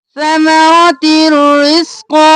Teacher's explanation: تا کو رو میں مدغم کیا بغیر غنہ کے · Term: ادغام بلا غنہ